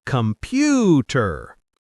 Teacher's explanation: The primary stress and length fall powerfully on the second syllable, pew. The first syllable, com, is quick and light, and the final ter is often so softened and rapid that it barely registers. · In many languages, it might be pronounced with three distinct, equally emphasized syllables: com, pu, ter.